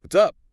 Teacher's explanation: >> Notice that what is becomes what's and up often gets a slightly shorter vowel sound.